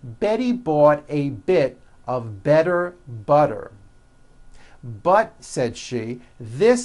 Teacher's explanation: that you know that practice saying this poem with me remember all the t's are pronounced as D's because they fall between vowels